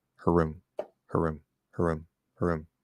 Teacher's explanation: if it's at least on the faster side of normal uh it is possible to just make it into a single R